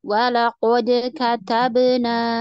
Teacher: dalnya tetap bunyinya De ya Ba juga bunyinya be karena dia Qalqalah